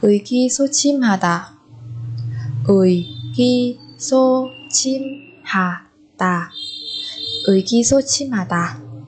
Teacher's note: Ở đây cái nguyên âm ui đặt ở âm tiết đầu tiên của một từ và phía trước nó thì cũng không có phụ âm nào cả, cho nên chúng ta đọc là ươi các bạn nhé.